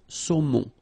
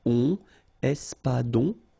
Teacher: O-N, remember, nasal in your nose.